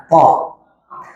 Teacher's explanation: Tempat huruf th adalah ujung lidah yang menempel pada pangkal dua gigi seri bagian atas.